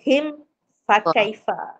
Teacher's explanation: Mim mati bertemu fa tu izhar syafawi. Nyata bunyi mim.